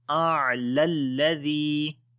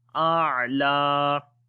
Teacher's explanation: And lam we long here if we stop, so we say A'la. Otherwise, if you want to continue, so then this lam we connect with the next lam as it will be A'lalladhi.